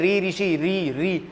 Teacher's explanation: मूर्धन्य से री ऋषि, री बोल के देखो, जीभ मसूड़ों के आसपास कंपन कर रही है